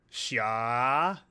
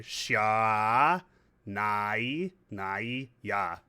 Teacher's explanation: It's a held out vowel. So it's doubling down on the A.